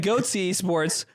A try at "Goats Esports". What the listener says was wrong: The way you said it, you put another E in there.